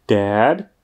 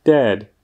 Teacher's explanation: u slovíčka dad, tedy táta, se jedná o to otevřené E, zatímco u slovíčka dead, neboli mrtvý, se jedná o to typické české E